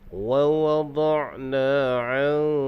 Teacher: Nun mati bertemu dengan kaf, hukumnya adalah ikhfa haqiqi. Jadi dibaca dengan dengung dua harkat. Cara dia kita renggangkan sedikit hujung lidah.